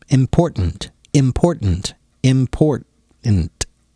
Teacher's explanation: you don't have to pronounce the T, the first T, as much.